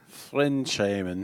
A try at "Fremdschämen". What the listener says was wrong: No, fremd. Like framed, fremd. There's an N.